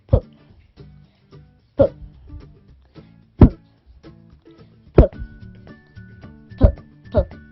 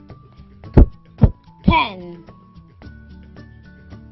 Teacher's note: First, press your lips together. Next, push out a puff of air as you open your mouth to make the P sound.